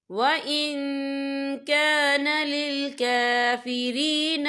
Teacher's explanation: یہ دیکھیں وَإِن، یہاں نون ساکن ہے، نون ساکن کے بعد جو ہے کاف آ رہا ہے اور کاف جو ہے اکفا کا ورڈ ہے تو ہم یہاں اکفا کریں گے، نون ساکن کی آواز کو ناک میں چھپائیں گے